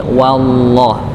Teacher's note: Jadi tetap wa-nya dibaca tipis, tidak dibaca tebal. Nggih, tidak dibaca tebal walaupun memang setelahnya bertemu dengan huruf yang tebal, lafaz Allah Subhanahu wa taala.